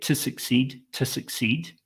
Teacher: to is going to be reduced to T